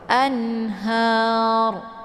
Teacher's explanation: Jadi posisi ujung lidahnya terangkat ke langit. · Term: dibaca tebal